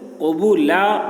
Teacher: یعنی الف کو پڑھیں گے، دو زبر کی تنوین کو نہیں پڑھیں گے، تو قبولاً نہیں پڑھیں گے، قبولا پڑھیں گے۔